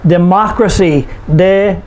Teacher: For example, democracy, democracy, 4 syllables. We put the stress on the third to the last syllable, which is ma, democracy.